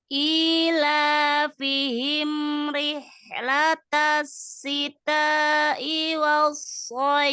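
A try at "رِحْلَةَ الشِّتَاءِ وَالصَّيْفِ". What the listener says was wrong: Rihla ini dialirkan ya. Rihlatasyita, huruf shin ya. Rihlatasyita. 4 atau 5 ya. Sempurnakan ya. Syita'i gitu ya.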